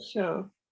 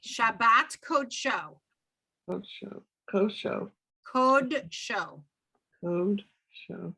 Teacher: pronounced o, not ah, because it's what we call a kamatz katan